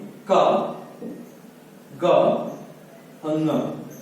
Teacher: अल्पप्राण व्यंजन क्या होते हैं कि ऐसे व्यंजन कि जिनको उच्चारित करने में जो हमारी श्वास है वो कम मात्रा में निकले, अल्प मात्रा में निकले, वो अल्पप्राण व्यंजन कहलाते हैं। और इनके उच्चारण करते समय हमें हा, जो हा की ध्वनि है वो न सुनाई दे, वो हमारे अल्पप्राण व्यंजन कहलाते हैं।